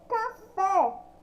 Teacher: Quando eu falo café, também sai o som forte no fé.